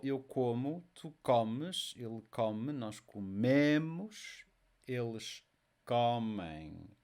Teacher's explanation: The word stress, next to last syllable